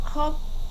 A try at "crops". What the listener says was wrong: Crops. Crops. Crops. S.